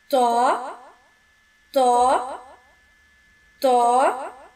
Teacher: زبان کی نوک اوپر والے دو دانتوں کی جڑ سے لگنے سے ادا ہوگا اور یہ پر پڑا جائے گا۔